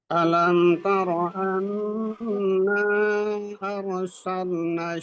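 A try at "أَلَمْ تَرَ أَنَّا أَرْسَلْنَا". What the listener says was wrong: Kurang panjang Pak Haji, kurang panjang mat jais munfasilnya.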